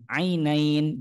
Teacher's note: harus dijelaskan ain, ainain. Jangan sampai salah membaca, merubah dengan huruf hamzah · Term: huruf ain